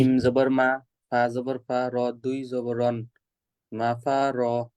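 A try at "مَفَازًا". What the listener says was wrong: দেখেন তো ফা কি আছে? ফা জবরের পরে খালি আলিফ।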